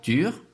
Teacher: it shares some features with French, such as the round vowel U